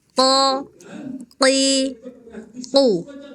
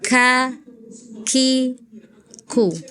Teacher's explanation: huruf qaf dan kaf sama-sama dari pangkal lidah, tetapi kalau qaf itu pangkal lidah paling belakang, sedangkan kaf agak sedikit di depannya ya. Hati-hati ketika harokat kasroh.